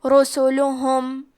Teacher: کلمت رسلہم میں را پہ سین پہ لام پہ اور ہا پہ چاروں پہ پیش ہے تو ہم یہ چاروں پیش کو برابر سے ادا کریں گے اور اسے برابر سے ظاہر کریں گے.